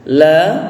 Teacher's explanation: la dibaca panjang dua harakat karena ada huruf alif